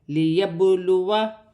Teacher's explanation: با ساکن ہے، حرف قلقلہ میں سے ہے، قلقلہ کے ساتھ ادا کیا جائے گا